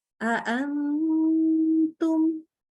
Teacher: ini tipis dengungnya karena huruf yang ditemuin adalah huruf ta. Ta itu sifatnya tipis ya karena dia huruf yang di pangkal lidahnya turun terus infitah lagi.